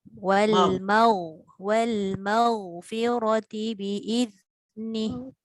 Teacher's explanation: Wallahu yad'u ila jannati wal maghfirati bi'idhnih. Ghain bunyi dia tebal sikit dan dia tidak melantun.